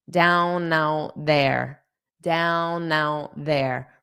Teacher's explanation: Okay, so when I just say down out, I'll pronounce the T on out because it's my final word. But then when I say it with there, I'm not going to pronounce this T. So it's going to sound like down out.